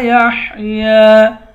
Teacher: یا پر کھڑا زبر ہے، کھڑا زبر کو ایک الف کی مقدار کھینچ کر پڑھیں گے۔